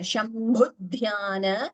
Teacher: bhu and dha mahapranas